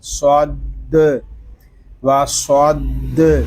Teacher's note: واو زبر وا، صاد دال زبر صد و صد، یہاں صاد کو ہم پر پڑھیں گے کیونکہ صاد حروف مستعلیہ میں سے ہے